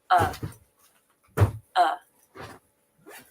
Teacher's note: the uh vowel is very relaxed there's no tension uh the jaw closes just a bit as well and the tongue relaxes